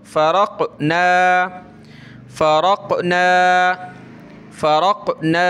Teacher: قاف پہ قلقلہ ہوگا، یعنی اس طرح پڑھیں گے کہ یہ لوٹ کر ہمارے منہ کے اندر واپس آئے ، فا زبر فا، را قاف زبر رق، فرقنا فرقنا فرقنا